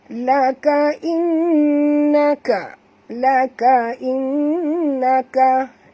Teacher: Nun bertasydid, wajib dengung, wajib al-gunah.